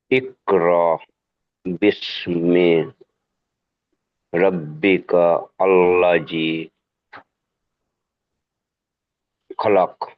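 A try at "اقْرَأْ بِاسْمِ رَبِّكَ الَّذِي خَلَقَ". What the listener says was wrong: জি, এরকম ছেড়ে ছেড়ে পড়লেও সহি পড়েন, মাশাআল্লাহ খুব সুন্দর পড়েছেন, পড়েন।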